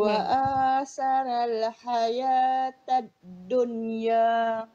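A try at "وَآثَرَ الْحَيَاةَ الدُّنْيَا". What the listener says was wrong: Tapi tiba roh ni akak baca nipih pula. Jadi patutnya wa asarol gitu.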